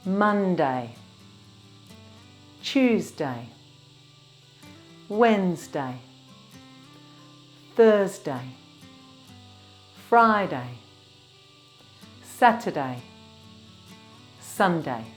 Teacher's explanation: Remember, the stress is on the first syllable.